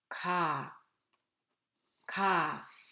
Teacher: D The sound 그 in the single vowel, single word 가 is voiceless soft sound with no aspiration